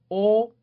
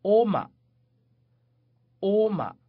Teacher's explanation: ▁也一样，nine，是前面▁ya▁的反义词，不要忘了▁ya，nine。接下来 又是一个元音字母▁o，把嘴要嘟圆了▁o